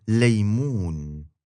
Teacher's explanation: you're going to bring the front of your tongue up by your upper front teeth, and the back of your tongue is going to stay all the way down